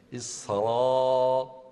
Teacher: فتح خالص مع بقاء التفخيم